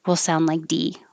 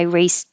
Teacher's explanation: race as a s which is voiceless so the e d will sound like a t